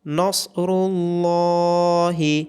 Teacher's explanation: اذا جاء نصر اللہ، صاد را اور لام کو موٹا پڑا جائے گا، لام کے اوپر کھڑی زبر ہونے کی وجہ سے لام کو لمبا کیا جائے گا